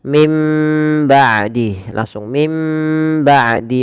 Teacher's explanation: bertemu dengan ba maka suara nunnya dimasukkan ke huruf ba atau dibalikkan sehingga terdengar dengan suara huruf mim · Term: iqlab